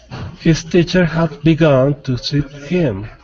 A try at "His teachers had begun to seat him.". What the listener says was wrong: Okay, so teachers, pronounce the S. His teachers had begun to seat him.